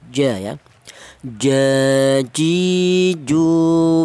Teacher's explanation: huruf jim itu keluarnya huruf berasal dari tengah lidah